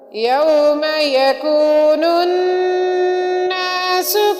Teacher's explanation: یوم یکون الناس میں نون مشدد ہے، نون مشدد ہونے کی وجہ سے ہم نون پر غنہ کریں گے